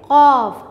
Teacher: हमारी जो ज़बान की जड़ है वो हमारे जब तालू से टकराती है तो कॉफ निकलता है